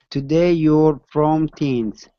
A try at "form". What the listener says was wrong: Okay, pronounce an R here. Form. You'll form teams.